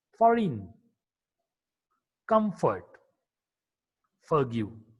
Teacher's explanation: F is a voiceless labiodental fricative consonant.